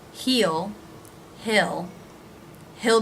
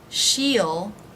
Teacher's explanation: to come quickly with the he will and she will contractions the e vowel might relax a little bit into the e as in sit vowel